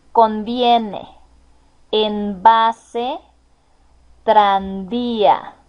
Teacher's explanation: No va a cambiar la pronunciación de la V desde la B, es decir, la letra B y la V, ambas se pronuncian exactamente igual, ambas son bilabiales